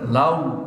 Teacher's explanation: Lau itu adalah madin bukan pakai o tapi pakai u. Jadi bacanya lau.